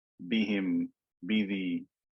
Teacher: pay attention to the sifa of shidda and jahr that occurs in the ba